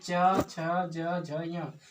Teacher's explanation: इस सब का उच्चारण स्थान तालु है